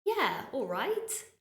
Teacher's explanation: All right just means okay, but the way I say it, yeah, all right. I'm smiling, my intonation is going up